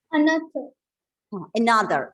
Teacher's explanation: from the word another the starting vowel it's given a schwa sound the second syllable is stressed